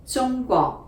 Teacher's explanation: we're going high tone to middle